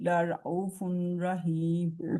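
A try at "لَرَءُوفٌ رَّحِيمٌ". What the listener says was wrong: फुन नहीं कहेंगे, फुर्रा कहेंगे। फुर्राही। रा के ऊपर शद बता रही है कि पीछे वाले लफ्ज से मिलना, हर्फ से मिलना है फुर्राहीम।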